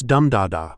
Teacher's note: Every word has its own rhythm. So for comfortable, it's dum da da.